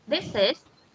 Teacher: Cái âm cuối cùng này chúng ta phát âm là âm Z này. Âm Z thì không phải là âm S nhá.